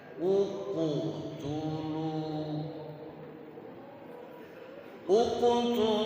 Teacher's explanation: Kalau harkat sebelum qalqalah itu dhammah, maka pantulannya pun berbunyi dhammah.